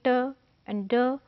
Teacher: air passage block हुआ, pressure create हुआ, और जब वो रिलीज हुआ तो ट एंड ड साउंड